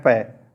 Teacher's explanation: जब आप बोलते हो तो देखना दोनों होंठ आपस में टकराते हैं